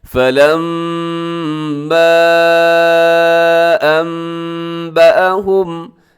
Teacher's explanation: یہاں میم مشدد ہے تو اس پہ غنہ ہے، اس کے اوپر چھوٹی مد ہے، اس کو آپ نے لمبا کر کے پڑھنا ہے۔